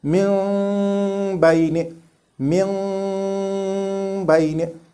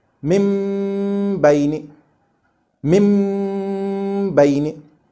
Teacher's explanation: That is why you may hear many reciters reading like this, min bayni, min bayni, starting from a hidden noon and then moving to a meme, while others straight away start with a hidden meme, like min bayni, min bayni. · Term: iqlaab